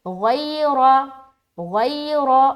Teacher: غین کو موٹا رکھتے ہوئے نرمی کے ساتھ ادا کریں گے یا لین کریں گے, کیونکہ یا ساکن سے پہلے زبر ہے, لیکن غین کی ادائیگی موٹے طریقے سے کریں گے. · را بھی موٹا کیونکہ اس کے اوپر زبر ہے